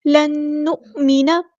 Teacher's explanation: حمزہ کی آواز میں جھٹکا دیں گے